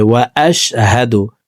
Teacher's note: হা জবর হা, হার উচ্চারণ হালকের শুরু থেকে পড়ব